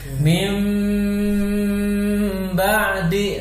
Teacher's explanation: dengungnya itu kira-kira 2 sampai 3 vokal, 3 ketuk